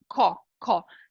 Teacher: esse o com abertura representa o o de avó então você vai fazer um som de ó mesmo aqui ó